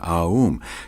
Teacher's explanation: You start in the back of the mouth, ah, and then oo. You fill the mouth, and closes the mouth. When you pronounce this properly, all vowel sounds are included in the pronunciation, Aum.